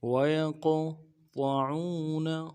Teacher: یا کو قوف کے ساتھ ملانا ہے، قوف حروف قلقلہ میں سے ہے، موٹا بھی ادا کریں گے اور قلقلہ بھی کریں گے